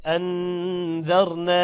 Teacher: کیونکہ الف سے پہلے زبر ہے الف مدہ ہے ٹھیک ہے الف مدہ کو ایک الف کے برابر یعنی 1 سیکنڈ لمبا کیا جاتا ہے